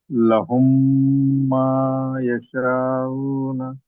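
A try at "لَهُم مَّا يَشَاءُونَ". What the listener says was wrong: ఇక్కడ దీర్ఘం తీయాలి నాలుగు ఐదు అరకాత్తులు దీర్ఘం తీయాలి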